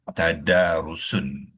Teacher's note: Selepas huruf akar yang pertama dal tu ada alif. Jadi alif ni alif mad. Kita panjangkan dua harakat. Tadarusun kita wakafkan dia jadilah tadarus.